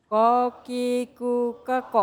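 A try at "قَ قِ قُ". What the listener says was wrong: Oh, masih pakai hames. Masih pakai huruf kaf, ya. Masih pakai huruf kaf. Coba bulas midah. Itu namanya kolkolak.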